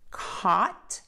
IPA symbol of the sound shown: kɔt